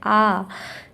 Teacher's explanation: बड़ा आ जो है वो दीर्घ स्वर होता है क्योंकि इसको पढ़ने में ज्यादा मतलब इसको इसके उच्चारण में ज्यादा समय लगता है। जैसे आ तो इसलिए इसे दीर्घ स्वर कहते हैं।